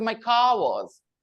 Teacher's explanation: They will not say ra sound now. Because the next word starts with a consonant, wa. So they don't need a linking consonant. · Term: R will be silent